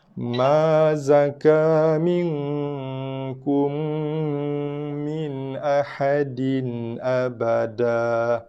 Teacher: Yang ini kita jumpa lagi satu ikhfa'. Nun mati jumpa kaf. Ikhfa' bibir kena renggang